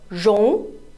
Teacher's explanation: this is the second tone second tone is the rising tone